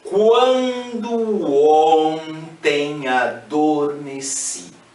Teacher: Os sons são nasalizados e praticamente ondulam a poesia, sugerindo um distanciamento da realidade.